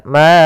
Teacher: Kemudian a'bud, ada bacaan mad jaiz munfasil, yaitu suara ma-nya dipanjangkan sepanjang 4 harokat